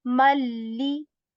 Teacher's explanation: we skipped the sound of noon sakin from this tanween and joined ma with l sound